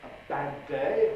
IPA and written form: ə ˈbæd̚ ˈdeɪ (a bad day)